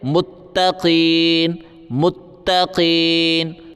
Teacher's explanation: تا کے اوپر تشدید ہے، سختی کریں گے، قاف کو موٹا کریں گے